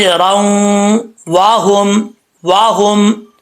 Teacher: वाव को पढ़ते वक्त होंठ गोल होंगे, अगर नहीं होंगे तो समझे वाव सही तरीके से अदा नहीं हुआ।